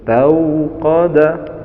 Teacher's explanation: setelah harokat fathah ada waw sukun, di situ bacanya layyin atau lentur, tauqada, namun jangan sampai miring, tauqada, tau harus tauqada nara, na mat tabi'i, naron, na mat tabi'i yaitu panjang satu alif, na ron.